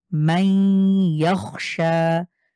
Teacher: সরাসরি মিমে ইয়াকে মিলিয়ে গুণনা করতে হবে